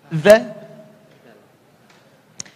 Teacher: Za harfun lithawi, lidahnya digigit sedikit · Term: zal